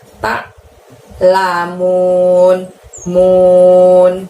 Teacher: ain disukun dari tenggorokan kita aja, bukan dari mulut kita